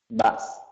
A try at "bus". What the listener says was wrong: Bus. No, it's not so short. It's not bus. It's bus.